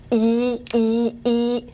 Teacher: this is a high front vowel · you need to push your tongue high and forward in that palatal region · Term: cardinal vowel 1